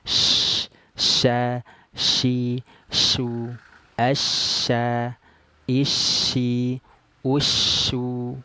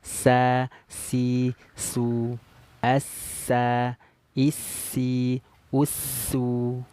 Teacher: kalau syin ya itu e dia mengeluarkan angin ya angin menyebar di dalam mulut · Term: attafasi